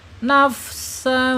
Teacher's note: Nafsan ini namanya ikhfa hakiki ya, harus disamarkan dan ditahan 2 harokat. Nafsan fadda ya, ada penekanan ya.